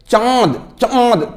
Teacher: के बाद आए जैसे चंद चंद तो लग रहा है ना मुख से भी बोल रहे हो नाक से भी बोल रहे हो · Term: अनुनासिक